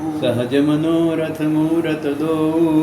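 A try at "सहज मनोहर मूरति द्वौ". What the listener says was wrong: मनोहर है, मनोरथ नहीं, मनोहर उनको हरने वाला।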